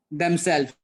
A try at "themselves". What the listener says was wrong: Themselves. The S has to be there.